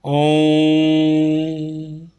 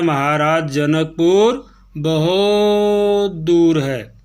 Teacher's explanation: इस तरह से क्लियर होता है, जब हम लंबा समय लेते हैं वो प्लुत स्वर में आ जाता है। वैसे ओम शब्द अपने आप में एक प्लुत स्वर के अंतर्गत आता है जो दीर्घ से भी लंबा समय लेता है